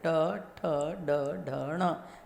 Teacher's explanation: जिह्वा थोड़ी सी घूम करके ऊपर लगती है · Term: मूर्धन्य